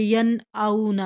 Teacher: نون ساکن یا تنوین کے بعد یہ 6 حروف آ جائیں تو نون ساکن یا تنوین کو ظاہر کر کے پڑھتے ہیں، یعنی ان کی آواز ناک میں نہیں چھپاتے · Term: حروف اظہار